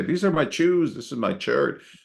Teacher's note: in Spanish there is no sh sound right it's all a hard CH